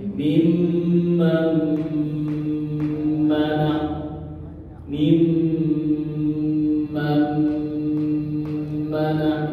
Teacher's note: Ini nun sukun ketemu mim, maka masuk melebur ke mim.